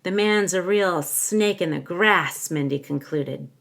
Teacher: I'm stressing grass the most. It receives my primary phrase stress, grass. Mindy concluded is quieter right after that.